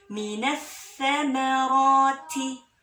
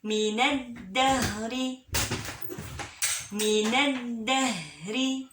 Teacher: lamnya nggak dibaca langsung ya, tapi ada alif lam tuh